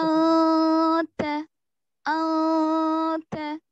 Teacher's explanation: नून की आवाज को रोक के पढ़ना चाहिए ताकि नून की नाक आवाज में जाहिर ना हो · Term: छुपा देंगे